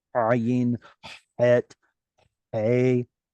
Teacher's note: All three of these were pronounced in the throat.